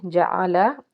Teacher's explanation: عین حرف حلقی کا حرف، حلق کے درمیان سے ادا کریں گے